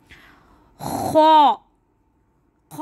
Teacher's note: तो चले मेरे साथ पढ़ें। खौ, खौ थोड़ा खरखरा अदा होगा, ठीक है। हलक का वो हिस्सा जो मुंह की तरफ करीब हो